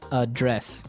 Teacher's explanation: the verb address has the stress on the second syllable